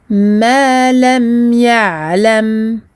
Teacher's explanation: on a le mim et le ayn sakin pour lequel il faut donner son temps de al-bayniyya.